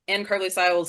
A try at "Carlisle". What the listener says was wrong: Carlisle. Carlisle. No, the S is silent. Carlisle.